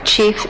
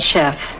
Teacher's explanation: We know that the first one, chief, was borrowed before the 16th century, and the second one, chef, after the 16th century, because we know that French underwent a sound shift in the meantime, from the ch sound to the sh sound in that environment.